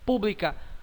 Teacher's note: a consoante B É pronunciada sim a consoante L é pronunciada Sim estão na mesma sílaba sim então forma Encontro consonatal Perfeito ou próprio então a resposta